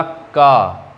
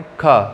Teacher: का में कम वायु, खा में अधिक वायु, इसीलिए ये कहलाता है अल्प प्राण और ये कहलाता है हमारा महाप्राण, ठीक।